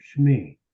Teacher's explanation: I took the vowel shame, and since I'm going to add a yud here, Shmi, I drop the A sound, turn it into a schwa, and make the schwa almost disappear. Shmi. That means my name.